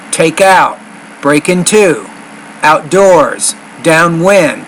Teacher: we're putting stress on the second syllable of those words or the second part of the word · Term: word stress